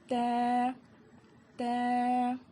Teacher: زبان کی نوک کو سامنے کے دو دانت کے جڑ میں لگانے سے ت ادا ہوتا ہے۔ اس کو بھی ہم ایک الف کے برابر کھینچ کر پڑھیں گے۔